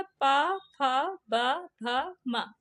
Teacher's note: ओष्ठ से कौन सी ध्वनि उच्चारित होती है? तो पा वर्ग।